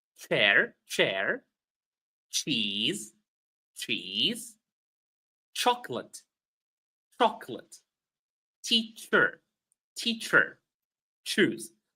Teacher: the CH is pronounced ch, with an additional T that is not written